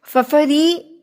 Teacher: را کے نیچے زیر ہے تو یہ ری نہیں پڑھا جائے گا، زبان بالکل ٹویسٹ نہیں کرے گی، اوپر کی طرف موڑی نہیں جائے گی، بالکل نیچے ری پڑھیں گے.